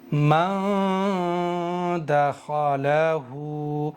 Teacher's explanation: اس لیے یہاں پر اخفا ہوگا, یعنی زبان کو مسوڑوں پر نہیں لگائیں گے, صرف ناک سے غنہ اور اخفا کریں گے